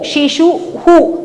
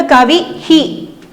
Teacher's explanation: ശിശുവിൽ ഊ അവസാനിക്കുന്നത് കൊണ്ട് വിസർഗത്തിന് ഊ, ശിശു ഹു. കവി ഈ അവസാനിക്കുന്നതുകൊണ്ട് കവി ഹി.